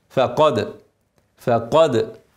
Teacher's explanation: ارقق الفاء افخم القاف